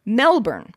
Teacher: put the emphasis on the first syllable and replace the o u with a schwa